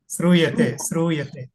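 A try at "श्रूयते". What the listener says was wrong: మీరు సకారం పలుకుతున్నారు. శివాలో షా పలకండి. శ్రూయతే శ్రూయతే శ్రూ వస్తోంది మీకు. శ్రూయతే మీరు సకారం పలుకుతున్నారు. మీరు సరిగమలో సంగీతంలో సా పలుకుతున్నారు. శివాలో షా పలకాలి. శివ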